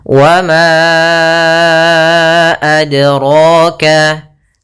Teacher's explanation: pada lafal dal sukun ini ada bacaan qalqalah artinya memantul ya. Iqtirab bergetar. · Maka ma-nya kita panjangkan dahulu baru kita baca a-nya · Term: mad jaiz munfasil